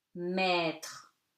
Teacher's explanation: AI, accent circonflexe, is read like E, open E